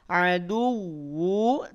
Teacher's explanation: Jadi cukup tekan saja. Adu, yang ditekan wawunya bukan dalnya. Tidak adu, bukan begitu.